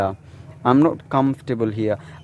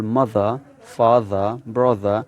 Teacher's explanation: in British accent you don't pronounce the R sound at the end of the word